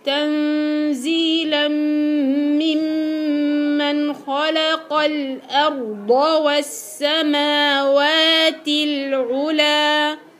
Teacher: الهمزه بتطلع دائما مرققه في كلمه الارض